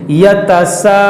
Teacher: تو حروف مدہ کے بعد یہاں عارضی سکون آئے گا تو یہاں مد عارض کا قاعدہ لگے گا. تو ہم اگر یہاں وقف کریں گے تو یہاں پر ہم مد عارض کریں گے، یعنی کھینچیں گے